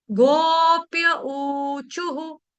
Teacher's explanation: विसर्ग, विसर्ग से पहले हमारा शब्द है चू, विसर्ग छोड़ने, विसर्ग से पहले हमारा शब्द है चू, इसीलिए क्या हो जाएगा वहां पे? विसर्ग का उच्चारण हम करेंगे हु, ह और छोटा ऊ, हु।